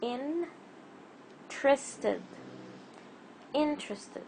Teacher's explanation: Again, we don't say interested, we say intre. The T and the R are not separated by any sounds or vowel sounds.